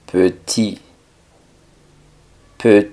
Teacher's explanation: una e en español p sino un poco más cerrada p y la t del final no suena · la e no es tan abierta como una e en español